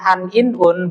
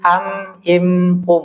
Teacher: Ya, jadi qalb namanya qalb, ya, qalbun, jantung, secara bahasa jantung, qalb, ya, atau iklab, yaitu dia artinya nun sukun atau tanwin bertemu huruf ba, satu-satunya hurufnya hanya ba saja. Ya, dan dia yang tadinya an, in, un berubah menjadi am, im